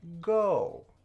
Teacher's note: Just a fourth tone there, eh?